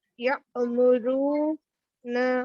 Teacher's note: حمزہ ساکنہ کے پڑھنے میں جھٹکا ہوتا ہے